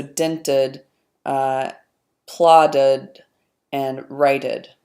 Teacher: an alveolar consonant so we are seeing a pattern here where any time there's an alveolar stop whether it's voiced or voiceless you get the addition of this vowel and an extra syllable there